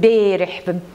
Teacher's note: very high raising of a